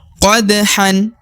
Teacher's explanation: harokat tanwin an dibaca 1 harokat meskipun di depannya ada alif, karena harokat an maka dibaca 1 harokat.